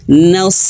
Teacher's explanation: Huruf shad dia memiliki sifat isti'la, terangkatnya pangkal lidah ya, artinya tafkhim, tebal.